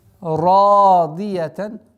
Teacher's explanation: Ра твердый звук с огласовкой фатха 2 раза удлиняем.